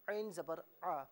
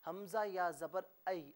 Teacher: عین کو گاڑے طریقے سے اور حمزہ کو نارملی طریقے سے ادا کیا جائے گا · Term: صفاتی فرق